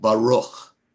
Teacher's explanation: If it has a dot, it's the hard sound, Kaf. If it doesn't have the dot, it's the guttural, Chaf, like Baruch. Baruch ends in a Chaf.